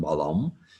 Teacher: so a dot over an m as in balum means that you close your lips in front but also the back of your tongue to the back of the roof of your mouth so that you make almost a nasally m sound the bar